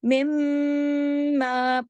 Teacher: मिम्मा पूरा हक अदा होगा, बड़ा गुन्ना होगा अकमल